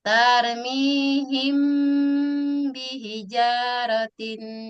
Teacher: Nah, di situ ada mim mati bertemu dengan huruf huruf ba. Mim mati bertemu dengan huruf ba dibaca samar.